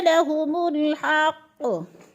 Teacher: तबय्यन लहुमुल हक़, हा को बारीक करके पढ़ेंगे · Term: बारीक हा